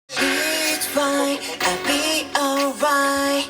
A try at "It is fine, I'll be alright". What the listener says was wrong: It ▁is ▁fine ▁할 ▁때 ▁it까지 ▁발음을 ▁다 ▁해줘야 ▁돼. it ▁is ▁할 ▁때 ▁it ▁is ▁이렇게 ▁다 ▁발음 ▁안 ▁해도 ▁되고 ▁조금 ▁과장되게 ▁발음을 ▁하면 ▁it ▁is.